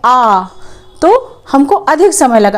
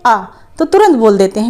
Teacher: जैसे हम बोलते हैं आ तो हमको अधिक समय लगा, अगर हम छोटा आ बोलते हैं आ तो तुरंत बोल देते हैं, कम समय में बोल देते हैं। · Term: दीर्घ स्वर